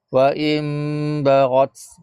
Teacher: ha ni nun mati temu dengan huruf ba dipanggil iqlab ha iqlab ni dia kena ada bunyi dengung sikit ha kadar dia antara bibir atas bawah tu tertutup dengan kadar sehelai kertas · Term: iklab